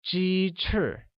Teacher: chicken or 鸡 uses a high level tone and wings or 翅 uses a falling tone